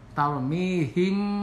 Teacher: mim mati menghadapi huruf ba, cara membacanya ini didengungkan, digunahkan, ikhfa safawi namanya